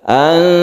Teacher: Ikhfa itu artinya samar, maksudnya samar itu adalah tidak idhar dan tidak idgham, tidak dijelaskan huruf nunnya, maksudnya adalah tidak dibaca nun dan juga tidak masuk ke za. Jadi antara keduanya, yaitu ketika kita membaca nun kita bersiap membaca za. Anzala, dan kita panjangkan sedikit, itu ikhfa. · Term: ikhfa hakiki